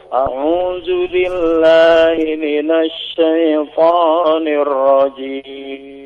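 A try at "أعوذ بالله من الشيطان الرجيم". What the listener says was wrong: A'udzu bukan dengan jim tapi dengan dzal ya Pak. dzal.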